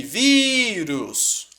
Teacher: sílaba tônica é a penúltima. É o vi. É uma paroxítona.